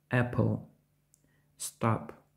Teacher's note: звук п схожий на український звук п тільки більш глухий та вимовляється дещо з придихом